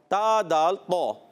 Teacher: تا کا مخرج جو ہے زبان کا سرا اور اوپر کے دانتوں کی جڑوں سے